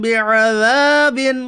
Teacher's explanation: الف مدہ کو ایک الف کے برابر کھینچ کر پڑھیے